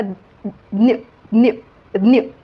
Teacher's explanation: जड याच्यामुळे होतो की त्याच्यामध्ये ज आणि य या दोन व्यंजनांचा तिथे उच्चार होतो